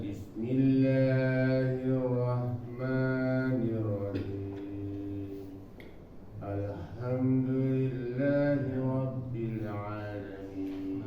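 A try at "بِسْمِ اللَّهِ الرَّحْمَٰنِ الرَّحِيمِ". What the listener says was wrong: Tinggal di H-nya aja ditipisin lagi ya Pak. Bismillahirrahmanirrahim. Himnya jangan sampai rohim seperti biasa. Nah, ini rohi, ada ha. Terus untuk di awalnya tadi di huruf hamzahnya ya Pak, jangan.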